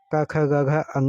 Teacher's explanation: क ख ग घ अङ जो है कंठ आता है।